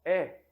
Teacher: é percebam vocês podem até repetir em casa quando pronunciamos é a língua sobe um pouco se fecha um pouco em relação ao a e ela a língua é jogada um pouco pra frente pra